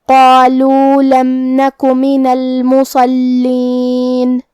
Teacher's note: کلمت المصلین یہاں ہمیں صاد کو بھاری آواز میں پڑھنا ہے. پھر یہاں لام پہ تشدید ہے، لہذا 2 حرف کے برابر ہم حرف اللام کو پڑھیں گے